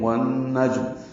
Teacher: واو کو نون سے ملا دیں گے، آواز ناک کے بانسے میں لے جائیں گے، جیم ساکن پہ قلقلہ ہے۔ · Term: غنہ